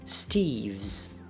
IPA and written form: stivz (Steve's)